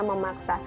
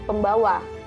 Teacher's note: fonem n atau nasal pada morfem men dan pen berubah menjadi m apabila bentuk dasar yang mengikutinya berawal dengan fonem p, b, ataupun f